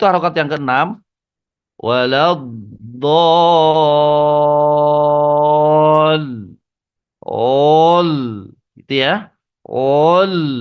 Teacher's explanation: 5 harokatnya standar, harokat yang keenamnya yang menuju lamnya itu diberatkan. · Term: mustakol, berat